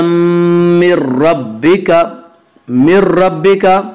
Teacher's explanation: جزاء من ربک، من ربک یہاں پہ ادغام بلا غنہ ہوگا